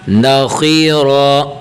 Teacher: خو اور رو یہاں پر دو حرف آگے موٹے، یعنی انہیں منہ گول کر کے پڑھنا چاہیے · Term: موٹا